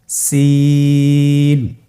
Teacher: জিহ্বার আগা সামনের নিচের 2 দাঁতের পেট ও আগার সঙ্গে লাগিয়ে উচ্চারিত হয়